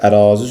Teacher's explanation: Ərazi sözündə A-da uzanma vardı.